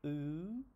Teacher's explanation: if I make the U sound, U, my tongue is in the back and at the top